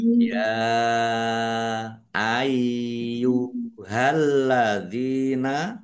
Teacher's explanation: lamnya ada tasdidnya dibaca dobel ditekan dan ditahan biar tampak dobel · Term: dibaca double